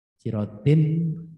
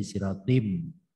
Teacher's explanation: sirotin kalau bertemu mustaqim ya menjadi sirotim. Jadi tulisannya sirotim.